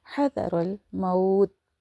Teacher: ذا soft پڑھا جائے گا، را بولڈ، اور موت تو جو ہے یہ جنرل سٹاپ کی علامت ہے، سائن ہے.